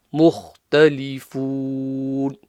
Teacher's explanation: So the kha top of the throat and clear. مختلفون. Sounds a bit like telephone.